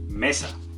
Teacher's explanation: El acento está en me.